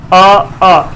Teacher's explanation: हमारे आपके कंठ से निकलता है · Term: कंठ वर्ग